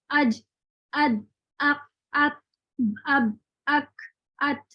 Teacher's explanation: شدہ کے حروف ہیں, ان کی آواز آگے نہیں بڑھتی